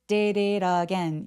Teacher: D하고 T가 모음 사이에 계속 끼어있기 때문에 굴러가는 소리가 나는데요. 이 굴러가는 소리를 flap sound라고 해요.